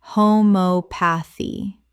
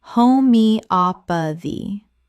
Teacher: The stress falls on the third syllable, op. 5 syllables in total.